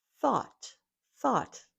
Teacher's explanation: That unvoiced th followed by a and t.